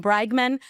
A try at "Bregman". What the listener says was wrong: No, it's not an A. Not bragging. Brag.